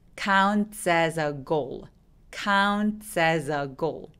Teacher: 이거 왜 그러냐면 첫 번째 S는 무성음 뒤에 바람소리 T 뒤에 오기 때문이고요. 두 번째 as 같은 경우에는 울림이 있는 유성음 뒤에 s가 오기 때문에 이 s는 z라고 울림이 있는 z 발음으로 바뀝니다.